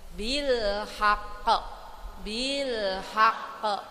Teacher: karena ada tasdid maka pantulan kita harus lebih kuat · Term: huruf Qalqalah, huruf qalqalah